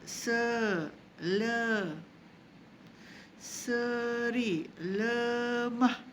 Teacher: Kalau I pepet, bunyi dia ke tepi. Ke tepi kan mulut kita.